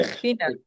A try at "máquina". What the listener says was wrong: Máquina, M-A-Q-U-I-N-A. And put a K above the Q and cross out the U. You don't pronounce the U.